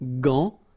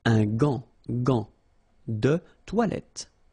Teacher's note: you've got this A-N, so it's nasal, gant, and then final T is not pronounced here.